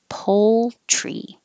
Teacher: you have to hold your tongue in the l position a little longer so you can hear it before you make the tr